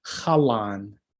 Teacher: a nice thick l between those two a's